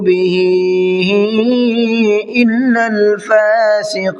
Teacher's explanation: بِهِ کے اندر مد منفصل کا قاعدہ ہے، اس لیے 1 سے 3 الف کی برابر کھینچ کر کے پڑھنا ہے